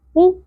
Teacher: और इसके ऊपर पेश है तो क़ाफ को पुर पढ़ेंगे, नरम तालू से अदा करेंगे और पेश को ज़्यादा नहीं खींचना।